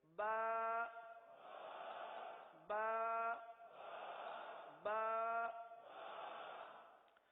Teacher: کہاں سے ادا ہوگا؟ با ہونٹوں کے، دونوں ہونٹوں کے تر حصے سے ادا ہوتا ہے